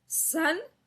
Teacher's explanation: यहां पर दंता स का उच्चारण हो रहा है